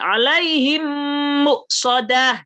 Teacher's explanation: idgham mimi itu berarti ketemu yang sama mim dengan mim gitu sama tiga ketuk juga